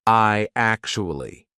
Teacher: when you've got I actually, how are we going to link that? What we're going to put in the middle is we're going to put a Y sound.